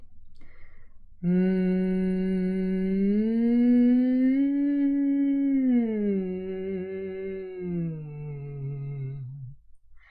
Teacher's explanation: Then my voice went higher, then back to normal, and then lower. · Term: pitch